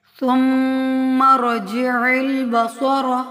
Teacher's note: میم مشدد کو ہمیشہ غنہ سے ادا کیا جاتا ہے، یعنی اس کی آواز کو بھی ناک میں ٹھہرایا جاتا ہے، غنہ کیا جاتا ہے جو ظاہری غنہ ہوتا ہے۔